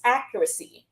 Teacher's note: So accuracy, the stress is on the first syllable.